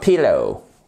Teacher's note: Le stress se fait sur la première syllabe. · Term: accent tonique